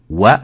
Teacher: you bring your lips forward, and you say wa, then you open. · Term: waw